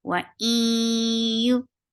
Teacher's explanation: this is idgham with gunna. So, and this gunna will be akmal. So keep the sound in your nose for a longer time. Wa'im, for dhamma, circle your lips.